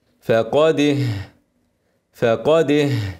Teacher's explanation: وقبلها الدال شديده مجهوره